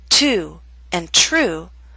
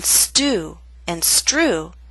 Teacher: With ST or STR, the true T loses that strong puff of air. So in the words to and true, we have the puff of air. But in stew and strew, that strong puff of air is absent. Take your hand and place it in front of your lips, say these 4 words, and you will feel the difference.